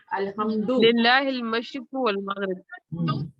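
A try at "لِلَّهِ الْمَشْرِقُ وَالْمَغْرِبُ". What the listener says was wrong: اچھا للہ مشرق کے اوپر آپ زیر کیوں لگا رہی ہیں؟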